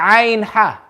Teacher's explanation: When you say Ain Ha, you can feel your Adam's apple vibrate. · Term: Huruful Halaq